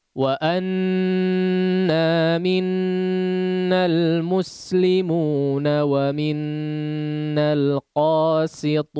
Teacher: Maka diperhatikan pengucapan huruf sinnya tipis tajam.